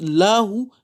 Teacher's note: il n'est pas tafkhim, c'est un la tarqiq